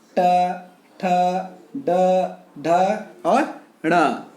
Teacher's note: मूर्धा अर्थात मुंह के भीतर की ऊपरी छत वाला भाग से निकलने वाले ध्वनि को मूर्धन्य व्यंजन कहा जाता है। जैसे ट, ठ, ड, ढ और ण।